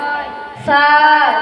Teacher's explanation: জিহ্বার আগা সামনের উপরে দাঁতের আগা সাইডে লাগিয়ে সা উচ্চারিত হয়